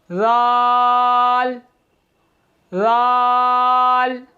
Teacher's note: ज़ुबान का सिरा और ऊपर के दांतों के अंदरूनी किनारे से अदा होते हैं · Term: हरूफ लिस्विया